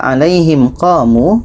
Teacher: Alaihim qamu, mim mati bertemu qa, qa tidak termasuk di sini, maka alaihim qamu, mim mati bertemu qa tidak dengung